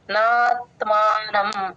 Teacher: నా తర్వాత కొంచెం దీర్ఘాన్ని ఎక్స్టెండ్ చేస్తాం